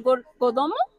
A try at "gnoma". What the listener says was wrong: La gnoma. Es que es noma, la G se omite, entonces noma. Sí, pues bueno, realmente es una pronunciación válida, porque pues siendo estrictos, pues el latín realmente la G se omite un poco a esas,